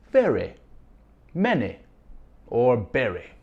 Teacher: Change the Y sound at the end of your words to sound more like I instead of E.